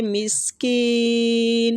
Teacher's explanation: سین باریک سیٹی کے ساتھ